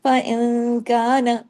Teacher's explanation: نون ساکن کے بعد کاف ہے، کیا ہو رہا ہے؟ اخفا حقیقی غنہ کاملہ.